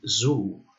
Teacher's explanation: sound like in same six then we have zet which is a voiced alveolar and fricative sound